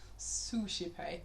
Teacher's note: We've got a sound at the beginning, again, that has no pitch. You can't pitch the s. You can't sing a pitch on that. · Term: unpitched sound